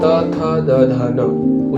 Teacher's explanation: त वर्ग त, थ, द, ध, न उच्चारण स्थान दंत। दंत यानी कि दांत, दांतों से छूकर या स्पर्श होकर ये आते हैं।